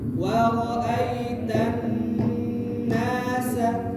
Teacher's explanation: Kemudian nun bertasydid harus ada gunnah kamilah. Gunnahnya harus sempurna dengan durasi 3 ketukan atau 2 harokat.